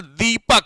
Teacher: दीपक बोलते हो तो ऑटोमेटिकली द पे ज्यादा टाइम लगा रहे हो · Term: बलाघात